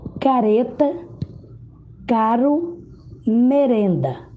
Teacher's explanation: Vocês observaram que o som é produzido na ponta da língua. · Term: Fraco